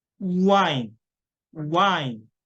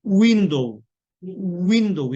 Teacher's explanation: 그러니까 우는 입술을 동그랗게 벌린 상황에 시작을 한다. W가 나오면 입술을 동그랗게 모은 상태, 우라는 상태에서 시작을 하셔야 돼요